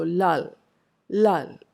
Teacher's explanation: when you pronounce the second l, it becomes more of a post alveolar sound